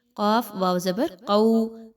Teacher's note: واو لین ہے، 1 سے 2 الف کے برابر اس کو پڑھیے